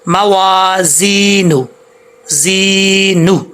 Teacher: زا کے اندر سیٹی ہے